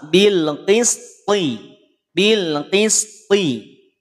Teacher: Huruf to saat kondisi kasroh, saat berharokat kasroh maka tebalnya tetap sama